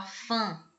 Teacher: o som é dessa parte da da palavra ela vai sair pelo nariz · Então, quando você tem uma letra, uma vogal com um til, você está nasalizando, ou seja, o som dessa parte da palavra, ela vai sair pelo nariz. Então, quando você fala fã, vai sair pelo nariz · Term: nasalizar